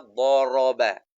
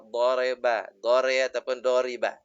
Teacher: Sebab sebelumnya pun huruf yang tebal, da, maka ra pun bunyi raba. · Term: ra tebal